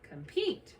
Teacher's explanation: Accents on the second syllable. Vowel closable short, cut it with a breve.